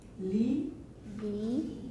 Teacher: that's really no different from Chinese, but with a palatalized L at the beginning